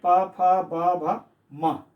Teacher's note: जब हम वर्ण का उच्चारण करते हैं तो ओष्ठ, ऊपर और नीचे दोनों ओष्ठ जो है आपस में मिल जाते हैं, इसलिए इसको ओष्ठ वर्ण कहते हैं।